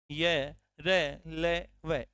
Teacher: र तथा ल का स्पर्श होता है जबकि य और व का कोई स्पर्श नहीं होता है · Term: अंतस्थ व्यंजन